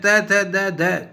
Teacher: ध्वनियां दंत से तात्पर्य केवल ऊपर के दांतों से है इसलिए ऊपर के दांतों के पिछले भाग को स्पर्श करने से जिन ध्वनियों का उच्चारण होता है वह दंत ध्वनियां है